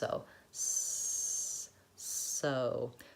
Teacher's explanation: open very much and my lips have no rounding at all my tongue is behind my teeth and I'm restricting the air